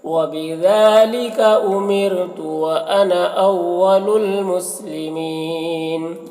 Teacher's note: امرتو میں را کو باریک پڑھیں گے۔ وانا، یہاں پر نا کا الف کو نہیں پڑھتے ہیں۔ اول المسلمین، یہاں پر وقف کی صورت میں مسلمین میں مد عارض وقفی ہوگا، تو اس طرح سے پڑھیں گے۔ · وبذالک، ذال میں کھڑا زبر ہے، ایک الف کے برابر کھینچیں گے۔ امرتو میں را کو باریک پڑھیں گے